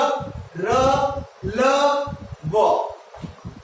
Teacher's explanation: य के अंदर न तो जीभ किसी भी मुख के किसी भी भाग को छू नहीं रही है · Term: अंतःस्थ व्यंजन